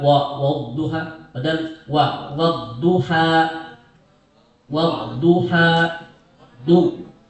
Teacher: Wadnum wad, bukan wawnya yang tebal tapi dad